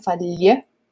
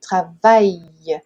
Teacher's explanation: esse duplo L, ele tem um som, não chega a ser um LH, porque com LH a gente tem que tocar o céu da boca